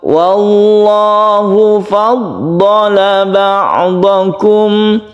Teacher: Kita awali dari lafdzul jalalah, yaitu lafadz Allah yang sebelumnya ada fathah. Maka lafadz Allah ini dibaca tafkhim atau tebal.